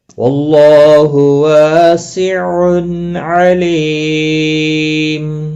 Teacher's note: ملانے کی صورت میں ادغام با گنہ ہوگا، دیکھو گرین کلر دیا ہوا ہے، تنوین کے بعد یرملون کا واو آیا ہے، اس لیے ادغام با گنہ ہوگا ملانے کی صورت میں۔ وقف کی صورت میں وقف بالاسکان ہوگا، 3 سے 5 الف کے برابر کھینچ کر وقف کریں گے۔